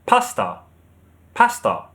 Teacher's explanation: So with the British, you have the stress on the first syllable. Pasta. But with American English, the stress is on the second syllable.